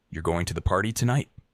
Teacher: with a rising tone, it sounds like you're asking a question